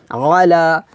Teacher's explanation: এই আইনটা আমরা গলার মাঝখান থেকে কিংবা হলকের মধ্যখান থেকে আমরা এই আইনটা চাপ দিয়ে চিকন করে উচ্চারণ করবো এইভাবে আলা।